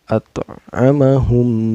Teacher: Cara bacanya dipantulkan dan pantulannya kecil. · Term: qalqalah sugro